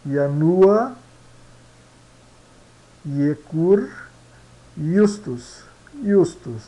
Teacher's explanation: aqui como no alemão né o J sua como I